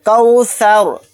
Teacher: اگر یہاں پر ہم آیت کریں گے، سانس توڑیں گے تو را کو ساکن بنا کر پڑھیں گے، کوثر، اس طرح سے۔